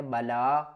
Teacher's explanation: یہ جو کھڑا زبر ہے اس کو 1 الف کی مقدار کھینچ کر پڑھنا ہے